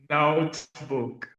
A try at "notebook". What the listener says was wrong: Ooh, that sounded really good.